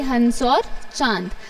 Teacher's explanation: उच्चारण करने में हवा मुख और नाक दोनों में एक साथ निकलते है